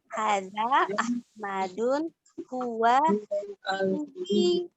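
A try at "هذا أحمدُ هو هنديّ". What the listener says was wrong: Hadza Ahmad, ya. Kalau kita berhenti di sukun, ya. Hadza Ahmad, tapi kalau kita mau lanjut, kita baca harokat terakhirnya. Hadza Ahmadu, bukan Ahmadun, bukan tanwin, ya. Diperhatikan dalam membaca. Jadi jawabannya hadza Ahmadu huwa Hindiyun.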